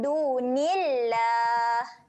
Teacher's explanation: Perkataan Allah ni dibaca dengan nipis sebab sebelum dia huruf nun berbaris bawah.